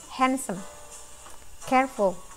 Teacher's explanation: ketika kita mengucapkan stress in the first syllable, jadi suku kata pertama itu lebih ditekan ketika pengucapan · Hand-nya yang lebih ditekan kan, sem-nya enggak. Jadi handsome, sem-nya enggak terlalu terdengar gitu.